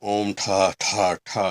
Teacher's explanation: that's a retroflex aspirated T sound with a short A repeated 3 times